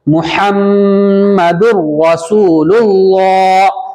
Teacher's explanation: یہاں پر جب لام کھڑا زبر لا بولیں گے تو پتلا کریں گے لام کو، لیکن جب ملائیں گے تو چونکہ اللہ کے لام سے پہلے پہلے لام پہ کیا پیش ہے تو لفظ اللہ کا قاعدہ جاری ہوگا نا، لام موٹا کریں گے اللہ کا لام، تو ایسے پڑھیں گے محمد الرسول اللہ.